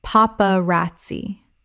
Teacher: Four syllables with the stress on the third. The z makes a ts sound in Italian.